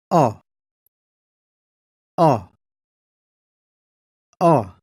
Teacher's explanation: O is a short vowel. The lips are forward slightly but relaxed. The jaw is open fairly wide.